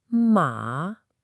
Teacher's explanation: It falls and then it rises a bit. You really need to listen for that initial dip in your voice. · You should be able to hear my voice go way down low to the bottom of my range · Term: third tone